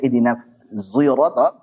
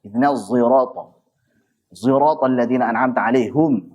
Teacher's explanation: zi bukan zai murni tapi sad dengan zai dicampur namanya ismam